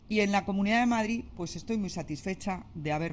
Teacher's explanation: the D is elided and the CH, the affricate here, is a little bit fronted.